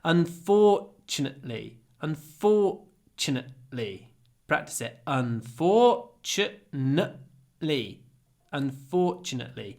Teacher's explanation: try to do the glottal stop